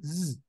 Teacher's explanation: se pronuncia enunciando una S sibilante a la vez que se hacen vibrar las cuerdas vocales, como cuando se imita el sonido de una abeja. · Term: la letra Zain